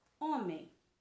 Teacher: a penúltima sílaba de homem é a sílaba mais forte então ela é uma palavra paroxítona